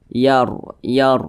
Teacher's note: atas nah berbaris ke atas ini disebut juga dengan baris fathah maka huruf ro dibaca tebal Yar Yar nah seperti itu jadi lidah kita itu terangkat ke atas